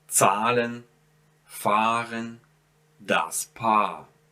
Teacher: So you might have words such as die Waage, der Draht. See, I don't pronounce ha, I just prolong the a here.